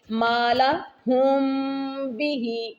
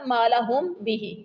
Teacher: میم ساکن کے بعد اگر با متحرک آ جائے تو وہاں اخفا مع الغنہ کر کے پڑھیں گے